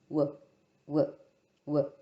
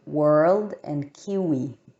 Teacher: it includes both the rounding of the lips and the tongue getting really close to the velum or the velar section. And it sounds like this, w, w, w. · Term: labiovelar glide